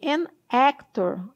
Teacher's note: A palavra actor tem um som bem aberto de e.